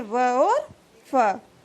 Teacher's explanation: दंतोष्ठ ध्वनि है व और फ